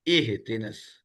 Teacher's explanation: حمزہ زیر ای ہوتا ہے نا، حمزہ زیر اے تو نہیں ہوتا، یہ تو اردو میں ہوتا ہے اے، عربی میں تو اے ہے ہی نہیں